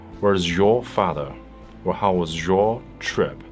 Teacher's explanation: Z plus Y becomes Z, as in decision.